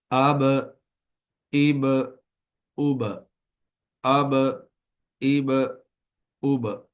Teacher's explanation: با کا مخرج چونکہ ہونٹ ہے تو اس لیے یہاں پر ہونٹ مل کر قلقلے کے بعد الگ الگ ہو جائیں گے